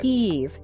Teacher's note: You finish the word with that buzzing vibration on your bottom lip.